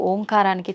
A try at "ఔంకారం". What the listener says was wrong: అది ఓంకారం కాదు, ఔంకారం. ఔం అని ఉచ్చరించినప్పుడు అకారము ఉకారము రెండూ పలకబడి ఓంకారం దీర్ఘమవుతుంది.